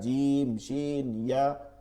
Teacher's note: জিব্বার মধ্যখান তার বরাবর উপরের তালুর সঙ্গে লাগাইয়া জিম শিন ইয়া